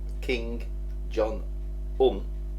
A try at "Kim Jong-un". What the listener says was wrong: Kim Jong-un. You said King. King. It's Kim. K-I-M. Kim. Kim. Kim Jong-un. Kim Jong-un.